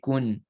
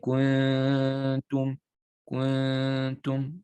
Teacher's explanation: So you're going to hide the noon sound. You won't say kun. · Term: ikhfa